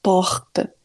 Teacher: o r ele é mais na garganta